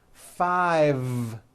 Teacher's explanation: yes i said five with a voiced v